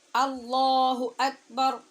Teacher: یہاں بھی 2 بلکہ 3 باتوں کی طرف آپ کا خاص دھیان مقصود ہے۔ ایک، دونوں جگہ پہ جو حمزہ ہے اس کو تحقیق سے پڑھنا ہے اور مضبوطی سے پڑھنا ہے